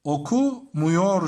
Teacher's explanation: Okumuyor şeklinde yazıyorum. A sesi U sesine dönüştü ve daralma meydana geldi. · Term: ünlü daralması